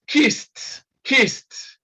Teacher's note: the sound again is t because s is a voiceless consonant